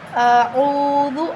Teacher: عین کے آگے واو مدہ ہے تو ہم اس کو ایک الف کے برابر لمبا کر کے پڑھیں گے۔